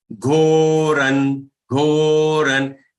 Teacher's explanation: Here on ra, the anuswar has to be pronounced as half na.